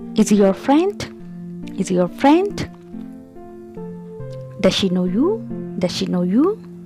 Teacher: Rising intonation, the pitch of the voice rises at the end of the sentence.